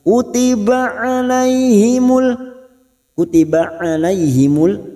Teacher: huruf Ain Jangan samakan dengan Hamzah huruf Ain memiliki sifat tawasud